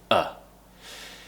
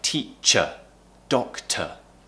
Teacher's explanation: tongue relaxed in the middle of the mouth and the mouth is very relaxed it's the easiest sound to make in English it's just ah